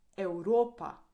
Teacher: Here the V sounds like U.